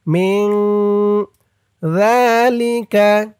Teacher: ইকফা গুন্না নুন সাকিনের পরে ইকফার হরফ জাল আসছে